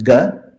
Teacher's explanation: if you do a soft unaspirated coming from the throat it's gu